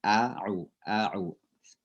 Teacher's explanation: Ain itu di tengah tenggorokan kita.